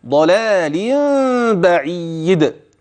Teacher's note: وبين الباء هكذا ضلال با هذا ما تسمعه ولكن انتبه ان النون قلبت نون التنوين الى ميم ثم اخفيت هذه الميم مع وجود غنه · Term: غنة